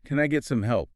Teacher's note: A polite, slightly questioning upward intonation on help makes a huge difference. It signals a request, not a demand.